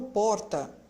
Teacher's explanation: Eu sou de São Paulo, eu falo porta. Eu marco o som do R vibrando um pouquinho a ponta da minha língua.